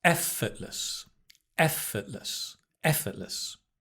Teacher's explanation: Notice the stress on the F.